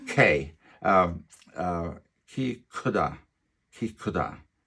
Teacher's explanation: the aspirated K will always rattle the paper